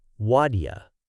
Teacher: What do you becomes wadya. See how the T and D sounds blend together?